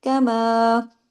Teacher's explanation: काफ को एक हरकत जबकि मीम को दो हरकत, क्योंकि मीम के साथ अलिफ मद्दा है, अलिफ मद्दा दो हरकत खींचता है ना।